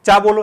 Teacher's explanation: च बोलोगे तो ऊपर जीवाण तुम्हारी टकराएगी गुंबद पे और फिर वापस नीचे आएगी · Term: स्पर्श संघर्ष